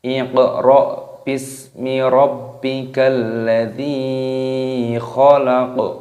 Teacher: Di sini terdapat tanda waqaf, tanda berhenti, maka qafnya yang paling belakang ini dimatikan, disukun. Qafnya ini dimatikan, dibaca sukun khalaq, dan dipantulkan suaranya, qalqalahnya.